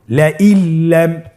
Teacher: নুন সাকিনকে আমাদেরকে পরবর্তী হরফের সাথে মিলিয়ে গুন্না ছাড়া পড়তে হবে